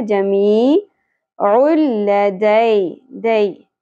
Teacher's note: یہاں پر یا ساکن حرف لین ہے نرمی سے ادا ہوگا دے نہیں پڑھنا